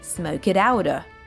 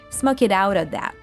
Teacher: he links that phrasal verb to the word of to create another American T sound in smoke it outer. Yes, he doesn't say the full sound off.